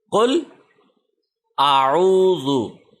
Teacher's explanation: حمزہ منہ کی خالی جگہ سے ادا ہونا ہے، عین حلق کے درمیان سے ادا ہونا ہے۔ جب بھی الف کے اوپر کوئی بھی حرکت آ جائے، زبر زیر پیش، دو زبر دو زیر دو پیش وغیرہ وغیرہ، کوئی بھی سائن آ جائے تو الف حمزہ میں کنورٹ ہوتا ہے، اس لیے ہم اس کو حمزہ کہہ رہے ہیں۔